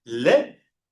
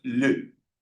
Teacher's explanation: Según yo, esto es le y esto es le. Entonces, esa variación de la E, de le, que es nuestra E española, y este es con los labios redondeados